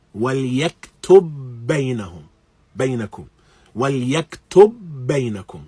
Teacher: Here, يَكْتُبْ and بَيْنَكُمْ, one ending in ba, one beginning in ba, and so we have idgham